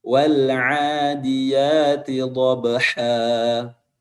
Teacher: kalau huruf ha, pertengahan tenggorokan itu mengecil dan menimbulkan celah yang sangat kecil, dan ketika suara melewatinya ia akan menimbulkan suara yang tajam.